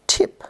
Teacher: the tip or blade of the tongue makes contact with the alveola ridge